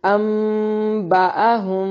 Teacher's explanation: انبأهم یہاں پر نون ساکن کا اخفاء مع الاقلاب ہے، یعنی نون کی ساؤنڈ کو میم کی ساؤنڈ میں بدلیں گے. انبأهم ہم یہاں پر میم ساکن کا اخفاء مع الغنہ.